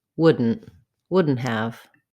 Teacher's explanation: Would not becomes the contraction wouldn't. We lose the ah vowel in not, and the T becomes a stopped T.